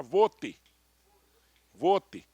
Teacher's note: O T é travado, não é vote